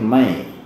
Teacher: Leburkan suara nun matinya dan dengungkan. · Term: idgham bi gunnah